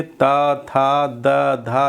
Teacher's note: दांत में जीभ छू रही है, दांतों को स्पर्श कर रही है